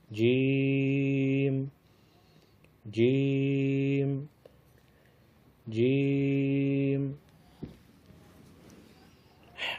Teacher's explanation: وسط زبان اور بالمقابل اوپر کا تالو، اس سے جیم ادا ہوتا ہے